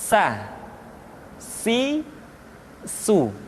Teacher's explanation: Berikutnya huruf sa, diucapkan sebagaimana kita mengucapkan huruf sa, yaitu ujung lidah di antara dua gigi seri kita